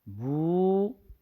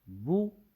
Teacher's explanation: پیش وہ کی آدھی آواز ہے، یعنی پیش و مدہ کی آدھی آواز ہے. و مدہ کی آواز ہے بو، لمبی آواز، جبکہ بو آدھی آواز ہے. تو اس سبق میں آواز کو لمبی نہیں کریں گے، ادائیگی میں اس کا خوب خیال رکھیں.